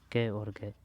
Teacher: अल्प है यानी कि बोलने में कमजोर आ रहा है। महाप्राण यानी कि बोलने में थोड़ा बहुत जोर लगाना पड़ रहा है। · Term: अल्पप्राण